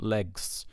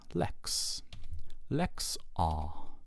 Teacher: we get legs which it's kind of harder to pronounce so that Gamma Sigma actually changes to x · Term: sound change